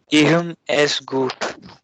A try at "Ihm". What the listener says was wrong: Im. H is silent, no?